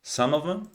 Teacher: here I pronounce the V and I drop the TH